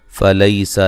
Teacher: فلیسا لی یا لین ہے، سین کو باریک سیٹی سے ادا کریں گے